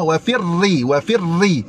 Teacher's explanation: ra nipis. Sebab apa? Ha ra berbaris kasrah.